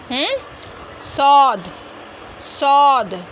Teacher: ज़बान की नोक और ऊपर नीचे वाले 4 दांतों के किनारे से।